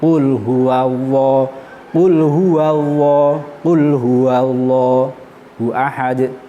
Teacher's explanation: bahwa cara ngelafadke lam itu ilate dibekuk munggah. Nanti kalau ndak dibekuk munggah, nanti keluare kaya huruf wawu. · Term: lafadz Allah